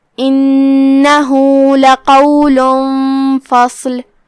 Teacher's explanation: کلمت انہ یہاں نون پہ تشدید ہے، لہذا اس کا دھیان رہے، ہم تشدید کو ظاہر کریں گے اور اسے 2 حرف کے برابر ادا کریں گے